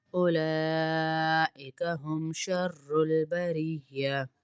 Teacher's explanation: لام کے اوپر بڑا مد ہے، اس کو 5 انگلیوں کے برابر کھینچتے ہیں.